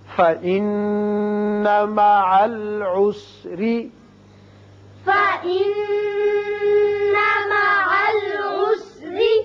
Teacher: نون مشدد ہے، غنہ کریں گے اور یہاں را کے نیچے زیر ہے، را باریک پڑا جائے گا